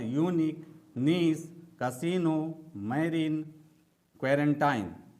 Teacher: इन शब्दों में आई का उच्चारण बड़ी ई की तरह होता है। यानी कि जब इसमें आई का उच्चारण करते हैं, तो इसमें ज्यादा समय लगता है।